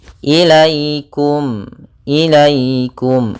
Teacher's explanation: Nah, di sini ada laikum, di sini ada ya sukun yang di dalam fathah, maka ini bacaan lin. Maka dalam pelafalannya harus lembut, tidak boleh ilaikum.